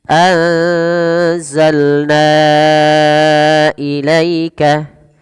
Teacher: Pada lafalna wajib kita panjangkan sepanjang 4 atau 5 harokat. Kenapa? Karena ia merupakan bacaan yang kita namakan dengan mad jaiz munfasil.